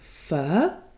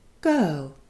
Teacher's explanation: Your jaw drops a bit and your tongue moves slightly forward from the mid-central position and your lips stay in a very neutral shape. It's a long sound, a single monophthong, one vowel, not two sounds put together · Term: mid-central neutral vowel